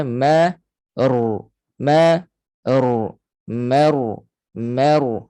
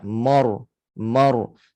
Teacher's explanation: itu ditebalkan ra tafkhim tetapi huruf sebelum ro tebal adalah mim jadi mim adalah huruf nipis nipiskan jangan terikut jadi Tebal juga